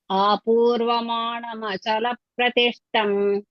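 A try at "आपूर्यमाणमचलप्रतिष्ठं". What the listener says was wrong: ఆపూర్వ కాదు మేడం, ఆపూర్యమాణమచల ప్రతిష్టం.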